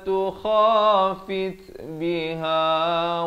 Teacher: Di sini fit ada bunyi hamas